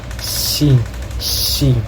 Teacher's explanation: And the third is nasal velar or velar nasal, produced by tossing the back of the tongue to the soft palate and allowing air to escape through the nose